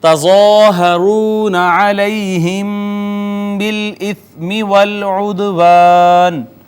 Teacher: ظا حروف مستعلیہ میں سے پر کر کے ہم نے اس کو پڑھا